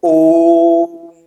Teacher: दीर्घ स्वर से भी थोड़ा सा जो है वो ज्यादा समय लगता है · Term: प्लुत स्वर